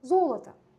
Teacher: Eyni qızıl sözündə zoloto yazırıq, amma vurğu birinci O saitinə düşür. Axırıncı O vurğusu olduğu üçün tələffüzdə A səsini verir.